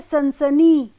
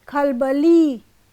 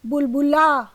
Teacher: खंडों से बने शब्दों के अंतिम दीर्घ अक्षर पर स्वराघात होता है